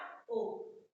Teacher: पश अर्ध समृद्ध, जिसमें हमारा ओ आता है।